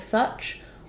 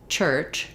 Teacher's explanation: the CH sound in such is what's called an affricate sound, which basically is kind of a combination of a fricative and a stop sound. And the symbol for the CH sound does have the symbol for t, which is a stop sound, and the symbol for sh, which is a fricative, which is a continuing sound.